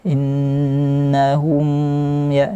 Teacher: mim sukun berjumpa dengan selain huruf mim dan ba, namanya izhar syafawi. Maka dikasih gunnah sedikit saja, naqisah yang kurang.